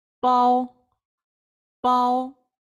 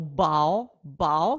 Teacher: це звук який знаходиться між українським звуком б і п тобто він має знаходитися посередині це має бути дуже оглушена б не взривна ПАО ПАО Да Ми не говоримо Бао Бао щоб було б